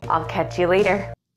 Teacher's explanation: the L in isle is a dark L rather than a clear L